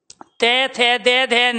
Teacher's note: जब भी हम तय थे दे धे न का उच्चारण करेंगे तो हमारी जीभ फटाफट लगती है दांतों पे, और जब दांतों पे लगती है प्यारे बच्चों तो दांत खुलते हैं। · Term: दंतव्य